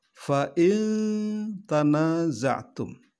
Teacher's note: nun mati atau nun sukun bertemu dengan huruf ikhfa yaitu tak maka Nun matinya dibaca mendengung